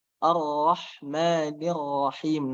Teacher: ro-nya, ro tebal dan dia tidak menggunakan bibir